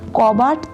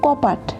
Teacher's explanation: কারণ এখানে বটা প হয়ে গেছে, কারণ ঘোষ ধ্বনি অঘোষ ধ্বনিতে পরিবর্তন হয়েছে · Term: অঘোষী ভবন